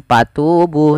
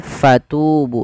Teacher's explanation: fa alirkan nafas karena fa punya sifat huruf hamas, yaitu harus mengalirnya nafas. Jangan dibaca dengan patubu, tapi fatubu dengan f.